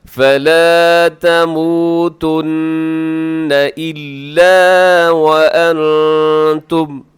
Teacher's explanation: یہاں نون ساکن کے بعد تا ہے تو یہاں پہ اخفا کیجیے گا